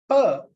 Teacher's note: It produces like an explosion. So the phoneme pa is a voiceless bilabial plosive